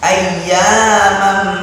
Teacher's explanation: ini ada mim bertasydid, makanya gunah